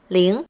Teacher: zero is ling in the second tone